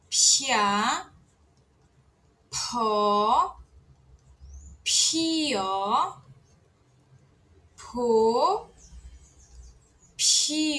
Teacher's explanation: Agora o p aspirado. P tem que soprar bastante.